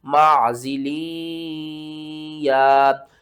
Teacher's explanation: لام کو یا کے ساتھ ملا کر پڑھیں گے، ادغام کریں گے اور ساتھ میں غنہ بھی کریں گے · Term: ادغام مع غنہ